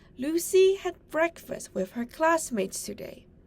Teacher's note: The words Lucy, breakfast, and classmates are stressed. The other words are unstressed.